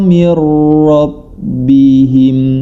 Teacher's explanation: Cara membacanya ketika nun sukun atau tanwin bertemu dengan huruf idgham bila gunnah, yakni lam dan ra, ya, dibaca, dimasukkan, nama idgham adalah dimasukkan ke dalam huruf berikutnya tanpa disertai dengan gunnah